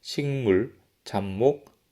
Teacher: 두 번째 음절 초성에 있는 미음과 니은으로 인해서 첫 음절 종성에 위치한 파열음이 비음으로 교체된 현상이라고 보면 되겠습니다 · 화면에 보이는 단어의 첫 음절의 마지막 소리, 지금부터 종성이라고 하겠습니다. 첫 음절의 종성에 위치한 기역과 비읍과 디귿이 이응과 미음과 니은으로 교체되었습니다. 기역과 이응은 연구개라는 조음 위치가 동일하고 비읍과 미음은 입술, 디귿과 니은은 치조, 잇몸이라는 조음 위치가 동일합니다. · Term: 비음화